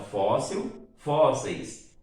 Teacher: fóssil não é uma palavra oxítona, é uma paroxítona. A sílaba tônica é a penúltima